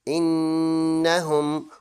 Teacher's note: غنہ کہتے ہیں ناک میں آواز لے جانا، اس کی ڈوریشن ہوگی 1 سیکنڈ